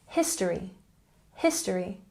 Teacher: Next we have history with emphasis on the first syllable.